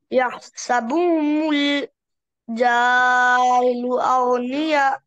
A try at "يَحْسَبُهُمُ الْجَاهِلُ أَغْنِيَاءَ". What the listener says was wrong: جاهل مد नहीं करना.